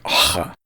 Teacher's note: by the Roman lowercase without a tail. Chet, the emphatic H, originally represented an unvoiced fricative as low in the throat as possible , like ha, but most modern dialects of Hebrew have shifted